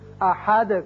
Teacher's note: هو اللہ احد ہے لیکن یہاں آیت ختم ہوتی ہے لہذا دال ساکن ہو جائے گا اور اس کی صفت قلقلہ ادا کریں گے